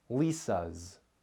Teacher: Your vocal cords vibrate when you make vowel sounds. So when S follows the vowel sound in Lisa's, the S makes the Z sound, Lisa's. Here are some words that end with a voiceless S sound because the S comes after a voiceless sound. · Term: voiced Z sound